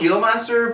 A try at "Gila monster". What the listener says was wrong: Actual pronunciation of it is Gila. Gila. H, with the H. Gila. Gila.